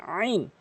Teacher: চাপ দিয়ে হলকের মাঝখানে আইন। জিম জিম জিম, জিব্বার মাঝখানে উপরে তালুর সঙ্গে জিম জিম।